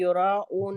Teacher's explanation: यहाँ पे हम ख्याल रखेंगे कि युराऊन में हम हमजा की अदायगी करेंगे, आइन की नहीं करेंगे